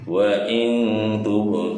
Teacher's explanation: Hukum tajwidnya adalah qol qola sugro ya. Jadi pantulannya sedikit saja. Wa in tub du, du ini di atas huruf dal ada tanda doma, di depannya ada wawu sukun.